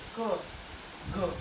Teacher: ક તરત બોલાઈ જાય. ગ એમાં થોડીક વાર લાગે, એમાં વધારે કંપન થાય છે.